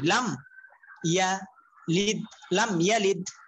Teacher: মিম সাকিনে পরে যদি বা আর মিম কোনটাই আসলো না তাহলে গুণনা হবে না তো যেটা হবে না এটাকে বলা হয় মিম সাকিনের ইজহার ইজহার